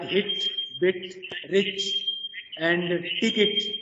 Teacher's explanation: it is centralized front half closed unrounded vowel, and it is a short vowel · the rear part of the front of the tongue is raised just above the half closed position, and the lips are loosely spread